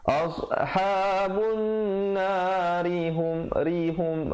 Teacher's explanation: ri itu jadi nipis kalau pilih untuk sambung, pilih untuk wasal